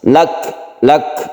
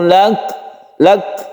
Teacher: Kaf ini apabila kita sukun, maka dia itu membentuk lelehan atau hamas ya. Jadi ketika kita mensukun kaf, kita menghembuskan nafas sedikit, itu membentuk hamas.